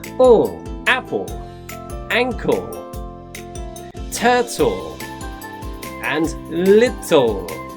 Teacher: LE will make the sound ough on the end of a word, like apple. We do not say the E, we just make the sound of the letter L.